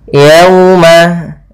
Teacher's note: waw sukun yang didahului fathah, maka ini wajib kita baca dengan lembut karena waw memiliki sifat lembut yaitu sifat lin. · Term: bacaan lin